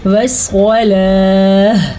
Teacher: دیکھیں میں نے تا کے بجائے ہا پڑھی ہے